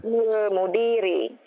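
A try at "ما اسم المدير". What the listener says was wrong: Itu pertanyaan. Intonasinya bagaimana? Masmul mudiri.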